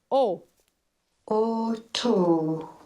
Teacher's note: lábios arredondados. A mandíbula começa a trabalhar um pouco mais. A língua ainda está alta na região posterior. Temos também ainda o nível de abaixamento da laringe. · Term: vogal o